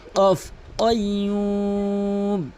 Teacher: এখানে কখনোই কয়ুম বলবেন না, কাফের উচ্চারণ করবেন না। কফের উচ্চারণ জিহ্বার গোড়া উপরে তালু থেকে, কফ, কয়ুম।